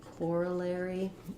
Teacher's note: in corollary we have first syllable stress